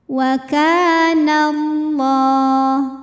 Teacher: Wa ka ada hukum mad tabi'i dhahiri sebab ada alif yang sebelumnya berbaris fathah. Cara bacanya panjang 2 harokat. Wa kana Allah.